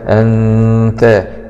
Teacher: نون سكون مع الإخفاء الحقيقي